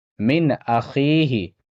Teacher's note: نون ساکن کا اظہار ہوگا، نون ساکن کے بعد حمزہ ہے، یہاں یا مدہ ہوگا، تھوڑا کھینچ کر پڑھنا ہے